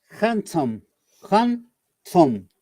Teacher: remember, in handsome, there is no D sound